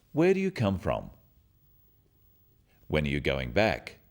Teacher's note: Questions starting with where, when, what, why or who are asking for information, and they often have a falling tone